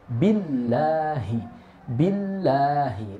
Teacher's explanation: lafzul jalalahnya atau kalimat Allah di sini dibacanya tarkik atau tipis